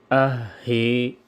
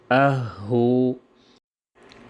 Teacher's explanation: یہ تھا دوسرا مخرج جو اقصائی حلق سے ادا ہوتے: حمزہ اور ہا، یعنی حلق کے نیچے والا حصہ جو سینے کی طرف ہے